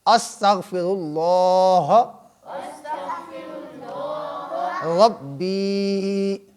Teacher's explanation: یہاں پہ با کو لمبا کریں، یا ساکن ہے اور یا سے پہلے زیر ہے، اسے کہتے ہیں یائے مدہ۔ یائے مدہ، تو یہاں یا ساکن ہو، اس سے پہلے زیر ہو، اسے یائے مدہ کہتے ہیں۔